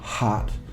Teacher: an English H and that's a complex sound we sometimes call it a glottal fricative